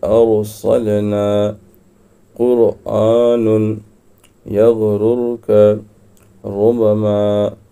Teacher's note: تو را ساکنہ ہے اور یہاں لکھا ہے رائے ساکنہ سے پہلے زبر ہو، رائے ساکنہ سے پہلے زبر یا پیش ہو تو را پر ہوگی۔ یہاں رائے ساکنہ سے پہلے زبر ہے تو را یہ پر ہوگی، باریک اس کو نہیں پڑھیں گے